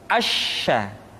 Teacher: Berikutnya huruf sya. Sya dikeluarkan dengan cara mengangkat tengah lidah kita ke langit-langit. Asya. Dan sifat yang dimiliki oleh huruf sya yang paling nampak adalah apa yang disebut dengan sifat at-tafashi, yaitu menyebarnya angin di dalam mulut kita.